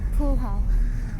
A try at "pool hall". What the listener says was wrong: These days it's a poo-ha. There's no L's in it. Poo-ha. Poo-ha.